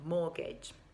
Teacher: careful about pronunciation if you check the writing it's spelled m-o-r-t-g-a-g-e that t you don't pronounce it you can just happily skip to the next consonant sound